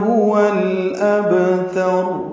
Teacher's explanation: ہا اقصی حلق سے نکالیں گے، اس کو جلدی پڑھیں گے